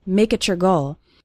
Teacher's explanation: And you can see something funny happening with the words make it your. When we have a word ending in T, followed by the word you or your, it often sounds like a CH sound, ch. So make it your goal sounds like make it your goal.